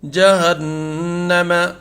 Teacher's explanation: غنہ ہوگا اس لیے کہ نون مشدد ہے یہاں پر